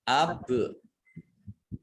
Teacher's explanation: Bak sukun bacaan kolkolah dibaca memantul